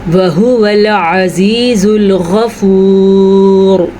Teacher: را کو پر پڑھنا ہے کیونکہ را کے ہم نے جب ساکن کیا تو پچھلا حرف بھی ساکن تھا، تو اس سے پچھلے حرف میں اس پیش کی وجہ سے را کو پر پڑھا جائے گا۔